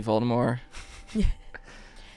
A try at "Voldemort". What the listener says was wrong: You never pronounced the T. I think it's like a soft T.